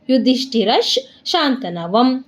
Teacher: ಯುಧಿಷ್ಠಿರಶ್ ರಾದ್ಮೇಲೆ ವಿಸರ್ಗ ಇದೆ, ವಿಸರ್ಗದ ಮುಂದೆ ಶಾ ಇದೆ, ಅದಕ್ಕೇನಾಗುತ್ತೆ ವಿಸರ್ಗ ಅರ್ಧ ಶಾ ಆಗುತ್ತೆ